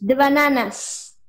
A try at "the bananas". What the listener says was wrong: Dígalo de nuevo, pronunciando esa S.